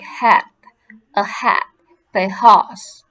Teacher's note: The air passes through the glottis, narrowing between the vocal folds produces the frictions noise. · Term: glottal fricative